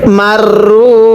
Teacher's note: পড়ুন মিম র জবর মার, র ওয়াও পেশ রু, এক আলিফ টান দিব, পেশের পরে ওয়াও সাকিন এক আলিফ টানতে হয়।